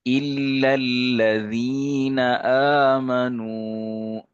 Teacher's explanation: الذین میں ذال کو باریک اور یا مدہ کھینچیں گے۔ الا الذین آمنوا، آمنوا میں واو مدہ۔